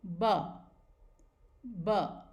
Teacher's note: देखिए, लिप्स को हमने क्लोज लाए, अपर लिप और लोअर लिप को दोनों को एक साथ लेकर आए और दोनों लिप्स बंद हुए हैं. कोई प्रेशर नहीं, जेंटली ये लिप्स टच हो रहे हैं एंड द वॉइस सामने आती है ब, ब.